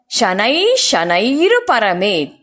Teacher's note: ವಿಸರ್ಗ ಆದ ನಂತರ ಶ ಅಕ್ಷರ ಇರೋದರಿಂದ ಶ ಅಕ್ಷರವನ್ನ ಸ್ಟ್ರೆಸ್ ಮಾಡಿ ಹೇಳಬೇಕು